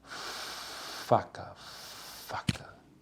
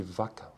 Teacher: Nada vibra aqui, ó, nas pregas vocais. Enquanto que vaca vibra, tem vibração.